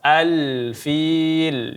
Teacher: ada alif lam qamariyah al-fil maka dibaca lamnya secara jelas